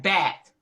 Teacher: the pronunciation of the th in bath as a t like bat